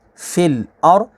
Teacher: را ساکن سے پہلے زبر ہے تو را کو پور یعنی موٹا پڑھیں گے